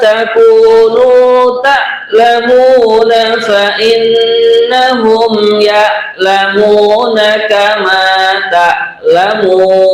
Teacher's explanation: di sini pada kalimat ta'lamuna pakai hamzah ya, bukan pakai ain ya